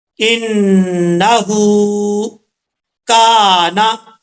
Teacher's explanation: کاف کے آگے الف ہے، 1 الف کی مقدار، اس کو لمبا کر کے پڑھیں گے